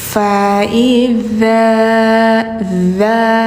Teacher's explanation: lidahnya kayak digigit, tapi jangan ditekan banget, hanya menempel doang